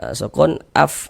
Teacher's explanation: Ini huruf fa, sukun af, ada nafas mengalir, afnan. Nan dibaca panjang, ini namanya adalah mad arid li sukun, namun pada awalnya namanya mad tabi'i.